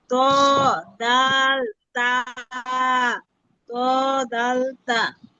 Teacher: 11 নম্বর মাখরাজ জিহ্বার আগা সামনে দুই দাঁতের গোড়ার সঙ্গে লাগায়া